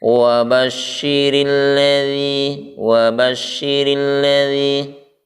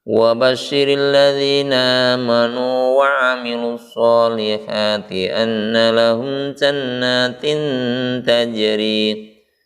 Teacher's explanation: huruf ra berharokat kasrah atau kasrah tanwin, ya, maka dia dibaca tipis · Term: tarkik